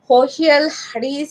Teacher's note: And she was not able to pronounce sa. Instead of sa, she used to pronounce ha.